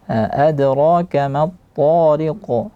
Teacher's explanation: dia ta-nya tidak boleh dimoncongkan dan qafnya diqalqalahkan